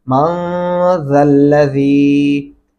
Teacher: میم زبر نون من، زال زبر لام زل، لام زبر ل، من زل، زال زیر زی، من زل زی، نون کے اوپر غنہ کریں گے اور زال کو نرمی سے پڑھیں گے